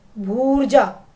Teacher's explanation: अगला उदाहरण देखिए बच्चों, दीर्घ ऊ फिर दीर्घ ऊ, इन दोनों का दीर्घ भी दीर्घ ऊ हो जाएगा, तो भू जमा ऊर्जा, ऊ और ऊ मिलकर बड़ा ऊ हो जाएंगे